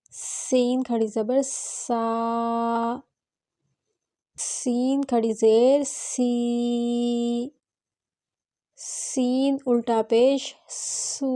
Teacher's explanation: اب ہم یہاں دونوں دانتوں کو جوڑ کے پڑھیں گے، سین کھڑی زبر سا، سین پڑھتے ہوئے سیٹی جیسی آواز آنی چاہیے،